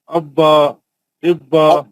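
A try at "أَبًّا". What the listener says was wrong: अब्बन तनवीन पढ़ी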